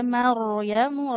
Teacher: Ro sukun didahului huruf berharakat fathah tebal ya jadinya